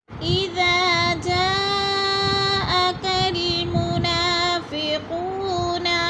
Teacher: جاءکا، جا میں مد متصل ہے، حروف مدہ کے بعد حمزہ ایک ہی کلمے میں آ گئے تو ادھر مد متصل 4 الفی مد ہے، 4 حرکات کے برابر ہم نے اس کو لمبا کر کے پڑھنا ہے